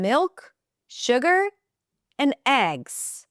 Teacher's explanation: The falling intonation closes it. It means full stop.